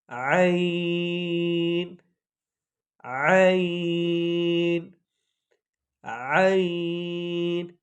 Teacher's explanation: باریک لفظ ہے اور اس کی آواز حلق سے نکلتی ہے